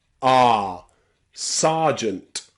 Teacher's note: This is the only time I know in English where the letter E is pronounced ah.